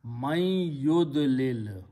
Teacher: Important thing is that in the starting with yud lilo, man will change to yud lil. And when you read them together, you have a noon and you have a ya, then qari will recite as a gunna.